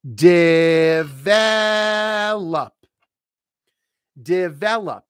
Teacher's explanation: Stress is on the second syllable. That's why it's capitalized.